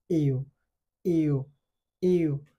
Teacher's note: Next যে alphabet আছে এটা হচ্ছে ইউ। ইউ সাউন্ড উচ্চারণের ক্ষেত্রে জিহ্বাটা একটু গোলাকার হবে এবং মুখটা শব্দ বাড়ার সাথে সাথে কি হবে একটু ছোট হয়ে যাবে